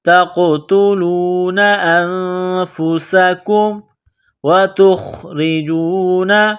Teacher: تقتلون انفسکم، نون ساکن کے بعد فا ہے تو یہاں پر غنہ کریں گے، آواز ناک میں چھپائیں گے۔ انفسکم، سین میں سیٹی کی آواز پیدا کریں گے، سین کو باریک کریں گے۔ تقتلون انفسکم وتخرجون، تا کو خا کے ساتھ ملانا ہے، خا کو موٹا کرنا ہے، را کو باریک کرنا ہے۔